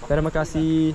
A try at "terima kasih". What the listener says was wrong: Yeah, just the pronunciation. The kasih. More like an E. Kasih.